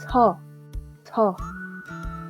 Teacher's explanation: Es una O un poco más abierta. Se dice 서. Si se dan cuenta, prácticamente al final de la palabra yo estoy intentando pronunciar una A, pero como que digo una O.